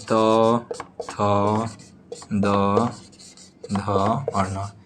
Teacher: त थ द ध और न इसका उच्चारण स्थान दंत है